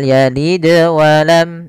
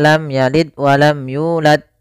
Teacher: di sini ada bacaan Qalqalah yaitu suara dalnya dipantulkan ya